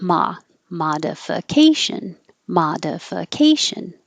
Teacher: stress is higher and longer primary primary secondary in this case ma is the secondary stress so it is longer but not higher · ma is the secondary stress, so it is longer but not higher because it would sound like modification.